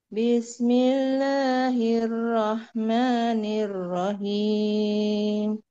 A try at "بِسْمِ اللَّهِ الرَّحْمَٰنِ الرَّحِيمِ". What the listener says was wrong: Nah, lebih turun, lebih turun lagi. Bismillahirrahmanirrahim.